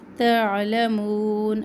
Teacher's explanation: عین وسط حلق سے